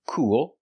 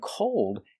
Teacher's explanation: cool has the long oo sound cool with a dark L and cold has the long o like no don't go when we connect the long o to the dark l o